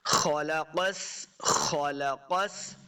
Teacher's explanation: خا اور قاف دونوں کو موٹا پڑھنا ہے، دونوں حروف مستعلیہ سے ہیں